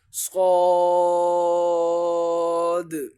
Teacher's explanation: آخر میں یہ دال کی وجہ سے آتی ہے، کیونکہ صاد جو ہے یہ پر بھی ہے، حروف مستعلیہ میں سے بھی آتا ہے، اور دال جو آخر میں آ رہا ہے وہ حروف قلقلہ میں سے آتا ہے، تو لہٰذا اس پر قلقلہ کیا جائے گا